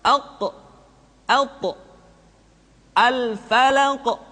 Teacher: Kemudian huruf qaf dan ta, karena dia memiliki sifat al-qalqalah ketika dalam keadaan sukun, maka qalqalah yang terdengar ketika mengucapkan qaf dan ta terdengar menebal suaranya